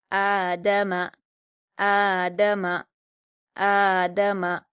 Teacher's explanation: 2 حرکات کے برابر۔ حمزہ پر کھڑا زبر ہے، اس کو ہم 2 حرکات کھینچ کر پڑھیں گے۔